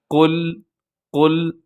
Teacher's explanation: سب سے پہلے لفظ آتا ہے قل، اور اس میں کیا کرنا ہے، اپنے قاف کو موٹا رکھنا ہے، اور اس کے بعد جو لام آتا ہے، لام باریک ہے، لام کو اپنے قلقلہ ہونے سے بھی بچانا ہے